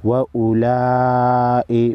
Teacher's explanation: बड़ी मद है 5 अलिफ के मिकदार खींचेंगे